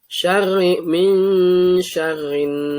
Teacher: Kemudian di sini gunnah. Nun tasydid gunnah. Jadi ditahan, dengung.